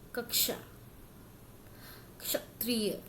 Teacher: ये दो वर्णों से मिलके बना है, एक है क और एक है मूर्धन्य श, इसलिए इसमें क की आवाज आती है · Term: संयुक्त व्यंजन